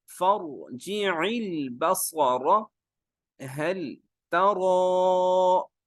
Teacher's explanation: لمبا بھی کرتے ہیں، موٹا بھی کرتے ہیں، کیونکہ را پہ کھڑی زبر ہے